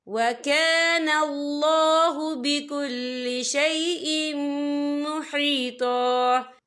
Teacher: یہ دیکھیں وَكَانَ اللَّهُ، یہ اللہ کا نام پر پڑھا جائے گا کیونکہ اللہ کے نام سے پہلے زبر ہے، اور آگے دیکھیں بِكُلِّ شَيْءٍ، حمزہ کے نیچے تنوین ہے، تنوین کے بعد جو ہے میم آ رہا ہے، اور میم جو ہے حروف یرملون میں سے ہے تو یہاں پر ادغام ہوگا، تو ہم اسے غنّے کے ساتھ پڑھیں گے۔